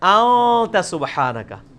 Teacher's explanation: اخفا اسے کہتے ہیں کہ خفی کر کے پڑھ رہے ہیں، نون پورا واضح نہیں کر رہے، ان نہیں پڑھ رہے، پڑھ رہے ہیں.